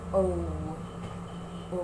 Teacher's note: So, in this, in producing this sound, ang position po ng lips is at its smallest. So, O. O. At meron pong off-glide ng W. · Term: long O